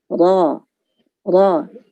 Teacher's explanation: Ro tebal, ro, ada getaran, tetapi supaya jangan terlalu banyak getarnya